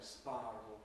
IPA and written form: ˈspɑːrəl (spiral)